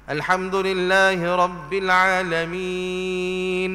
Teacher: Salah dah berhenti gitu sebabnya kita bila kita berhenti Alhamdulillahi Rabbil Alamin, seolah-olah atas nun itu ada sabdu. Jadi tak ada sabdu pun sebenarnya.